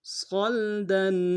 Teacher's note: صاد کو لام کے ساتھ ملانا ہے، صاد کو موٹا ادا کریں گے، لام ساکن غنہ نہیں ہوگا، دال کے اوپر تنوین ہے، غنہ کریں گے.